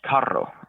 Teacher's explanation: use like a trill towards the front of your mouth, like in Spanish, carro, right?